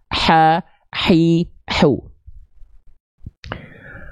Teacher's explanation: karakternya berbisik bersih clean Enggak ada kresek-keresek ha hi hu paham sampai sini jelas sampai sini kita lanjutkan · dilafalkan dari bagian tengah tenggorokan, karakternya berbisik, bersih, clean, nggak ada kresek-kresek. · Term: H kecil